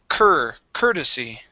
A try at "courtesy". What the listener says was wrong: So the OR there, don't worry about it being an OUR.